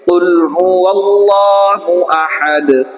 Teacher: আল্লাহর আগে কি এসেছে জবর এসেছে, তার জন্য এখানে কি হবে লফজে আল্লাহর লাম পুর হবে